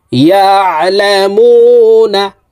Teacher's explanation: আইনকে হালকের মধ্যখান থেকে চাপ দিয়ে উচ্চারণ করতে হবে, কারণ আইনের মখরাজ হালকের মধ্যখান থেকে হবে।